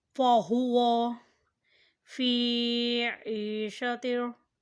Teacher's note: فا کے نیچے زیر ہے اور ساتھ یا ہے، تو اسے مد کریں یعنی کھینچ کر ادا کریں۔ فی عِیشَةٍ، عین کے نیچے بھی زیر ہے اور ساتھ یا ہے، اس لیے یہ بھی مد ہوگا۔